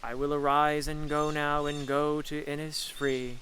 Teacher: you can hear a roughly iambic pattern to a lot of these lines